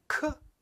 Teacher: Now, if we look at the velum, the soft palate, the first combination with the soft palate is a voiceless K sound. So K is a sound we use with the soft palate and voiceless